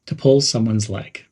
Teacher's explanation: Emphasize the word pull and leg.